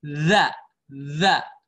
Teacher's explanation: Makhraj huruf zal atau za ya, letaknya sama di ujung lidah. Cuma dia meletakkan lidahnya itu di gigi seri atas. Za. Dia keluar lidahnya.